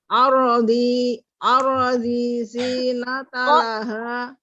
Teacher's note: Ro sukun sebelumnya fathah ditebalkan